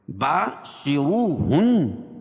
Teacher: واو ساکن سے پہلے پیش ہو تو واو مدہ، اس کو ایک الف کے برابر کھینچ کے پڑھیں گے